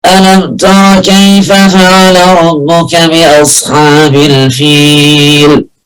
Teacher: الهواء كله طالع من الخيشوم، ده خطأ